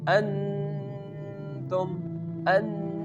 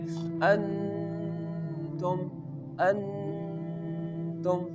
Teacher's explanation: when the hamza make the connection with the noon it will give the sound which goes into our nose